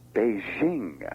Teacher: a kind of phony French soft J sound in the name of the capital for the capital of People's Republic of China.